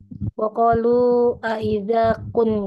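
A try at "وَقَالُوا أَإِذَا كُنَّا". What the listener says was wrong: Ya, awas Bu, itu kunna. Na-nya ada tanda panjang tidak, Bu? Jadi kita harus membacanya itu adalah membaca akhir huruf ya. Kan huruf terakhirnya itu adalah alif ya. Adalah alif. Maka alifnya harus terbaca. Maka waqulu aidza kunna Nah, itu.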